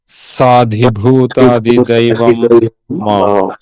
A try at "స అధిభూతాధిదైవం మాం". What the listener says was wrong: సా దీర్ఘం చెప్పకూడదు. అతి సా విడ తీసి స ఆ అన్నాం. సా ఆ స అధిభూత అధిదైవం మాం. దీర్ఘం తీయద్దు. స అధిభూత అధిదైవం మాం.